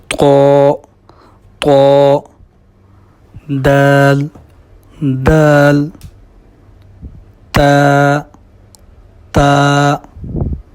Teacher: یہ زبان کی جو نوک ہے یہ ثنایا علیہ کی جب جڑوں کے ساتھ لگتی ہے تو اس وقت یہ جو ہے نا مخرج ادا ہوتا ہے طا، دال اور تا کا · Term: نطعیہ